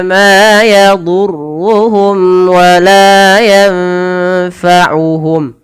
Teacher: Nunnya samarkan ke fa langsung.